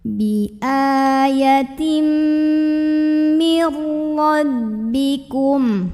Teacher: ghunah karena ada nun sukun yang bertemu dengan huruf ro maka Nun sukunnya lebur ke huruf ro masuk tanpa dengung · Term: idgham bila ghunah, idgham bila gunnah